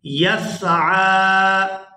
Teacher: کھڑی زبر کو جو کھینچنے کی مقدار ہے وہ 2 سے 3 سیکنڈ ہے۔ اس کو کھینچ کر ادا کرتے ہیں۔